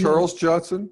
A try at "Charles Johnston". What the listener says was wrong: Johnston, the T.